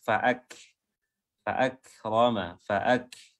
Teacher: ada nafas yang keluar setelah mengucapkan huruf kaf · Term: sifat hamsnya